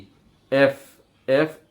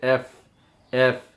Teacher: উপরের দাঁত নিচের ঠোটের পেটের সাথে লাগবে।